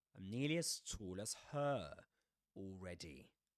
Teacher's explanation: her is pronounced with a girl vowel sound, the nurse vowel sound